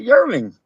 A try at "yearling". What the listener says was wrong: Now you say it with the G just to prove me wrong. Yearling. It's a yearling. Yearlin.